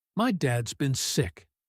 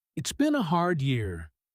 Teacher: her voice flat and heavy, each word landing slowly, almost like stones dropping one by one. "It's been a hard year." Notice there's no rising energy here at all, no bounce, no lift.